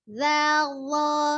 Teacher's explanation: Hanya terdengarnya berbeda karena dia ngangkat pangkal lidah, tapi nampak luar bentuk mulutnya sama.